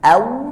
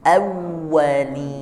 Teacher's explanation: Awwa. Jadi dia ada penekanan di huruf wawunya, disukunkan dulu. Aw, baru nyebut wawunya.